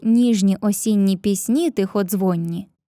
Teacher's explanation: застосував алітерацію повторення приголосного звука нь та асонанс повторення голосних і о